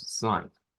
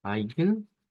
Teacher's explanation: Diptongo EI, escrito, que va a sonar a I. Diptongo EI escrito en el alemán, que se convierte en I.